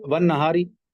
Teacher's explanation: रा के नीचे जेर आ गया बारीक